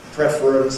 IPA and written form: ˈprefr̩əns (preference)